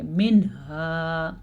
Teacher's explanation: ہم نون کو ظاہر بھی کریں گے اور بغیر کسی غنے کے پڑھ لیں گے.